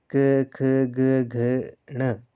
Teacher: जैसे तो आपको बताया है क, ख, ग, घ ण ये जो है वो आपके ये आपके कंठ्य व्यंजन है। यानी कि इनका उच्चारण जो है वो गले से होता है। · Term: कंठ व्यंजन